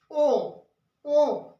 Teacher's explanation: दोनों होंठ के जुड़े बिना ओ बोला नहीं जा सकता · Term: ओष्ठव्य